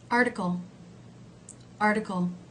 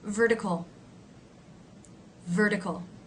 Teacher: it would be written in IPA with the r consonant sound the r consonant sound in these cases is just like the r as in her vowel sound